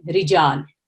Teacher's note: یہ ورڈ رجالن ہے لیکن وقف کی حالت میں یہ رجال بن جاتا ہے، ٹھیک ہے۔ تو را کے نیچے جب کسرہ ہے تو اس کو باریک پڑھیں، منہ کھول کے پڑھیں